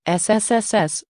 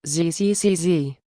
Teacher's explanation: and with your vocal cords and there aren't that many options your vocal cords go on and off that's it it's the only difference between sss and zzzz